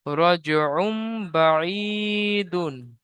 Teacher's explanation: আইনের উপরে দুপেশ তানভিন আছে, তানভিনের পরে বা এসেছে, তাই তানভিনকে মিমের দ্বারা পরিবর্তন করে এক আলিফ পরিমাণ গুণনা করে পড়তে হবে।